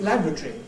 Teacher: If we said it in our way and stressed the first syllable, we'd be saying laboratory.